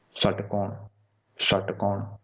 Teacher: मुंह के जो अंदर का जो भीतरी ऊपरी भाग है उस पे टकराएगी, तो वो आपका मूर्धन्य होगा